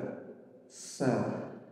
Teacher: Sa itu ujung lidah dengan gigi seri bawah. Tapi kalau ujung lidah dengan langit-langit atas bisa keluar sin. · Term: huruf sin